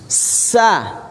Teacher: Karena makhrajnya keluar dari tempat yang sempit. Akan berdesis kan seperti kicauan burung karena keluar dari sela-sela gigi yang sempit. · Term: huruf yang berdesis